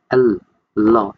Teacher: যখন জিহ্বা এবং তালু দুইটা কানেকশন তৈরি হবে হালকা মানে মাঝামাঝি কানেকশন তৈরি হবে কিন্তু সাইড দিয়ে জায়গা থাকবে তখন যে আওয়াজটা হবে সেটা হচ্ছে ল্যাটারাল সাউন্ড। মানে জিহ্বা এবং তালুর মধ্যে মাঝামাঝি প্রতিবন্ধকতা থাকবে। কিন্তু সাইডের জায়গা ফাঁকা থাকবে। যেটা দিয়ে বাতাস বের হইতে পারবে।